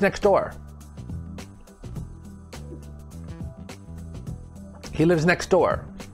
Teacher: so we drop the t sound it just sounds like next door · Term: disappearing sound